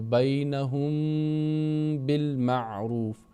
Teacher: میم ساکن کے بعد با آیا ہے تو یہاں پر ہم آواز کو روکیں گے، غنہ کے ساتھ ادا کریں گے میم ساکن کو